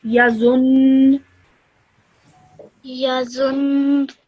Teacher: I will do so with a bit of force and hold that nasal sound in my nose so that I can manifest that tashdid